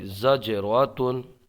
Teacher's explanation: یہاں پر جیم میں قلقلہ ہوگا، آواز پلٹ کے آئے گی